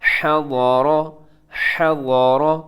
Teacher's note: حرف ضاد اسے بھی موٹا پڑھنا ہے، اس کے بعد جو را ہے وہ بھی آپ موٹا پڑھیں گے کیونکہ اس کے اوپر حرکت ہے